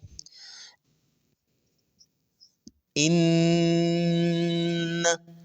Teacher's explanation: ये जो इन आवाज आ रही है नाक से इसको गुना कहते हैं · اس میں غنہ کی کیفیت ہوتی ہے، تھوڑی سی آواز ناک میں سے آتی ہے